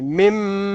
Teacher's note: تھوڑا غنہ کریں، یہ جو ہے من اس کو ناک میں رکھیں